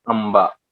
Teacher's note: आंबा, प फ ब भ, आणि ते अक्षर ज्या वेळेला येतील त्यावेळेला तिथे अनुस्वार देतो आपण. आंबा, हा ब आलाय, तिथे म चा उच्चार होतो, आंबा. अशा पद्धतीने या अनुनासिकांचा वापर होतो.